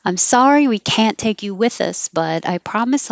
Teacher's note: can't will sound like can you won't say the t